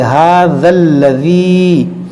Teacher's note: دو الف ہیں، اس کو نہیں پڑھیں گے، اس ذال کو لام سے ملائیں گے